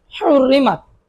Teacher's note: হাটাকে গলায় চাপ দিয়ে বলতে হবে